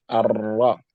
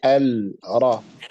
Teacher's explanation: the lam is going to be assimilated into the ra, and it's going to make the ra have a shadda